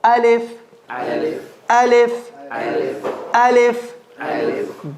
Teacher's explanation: Bottom of the throat.